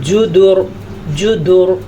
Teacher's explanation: پھر جب را ساکن ہوگی تو اسے پیچھے والا حرف ہم دیکھیں گے، پیچھے والے حرف پہ پیش ہونے کی وجہ سے یہ را پر پڑی جائے گی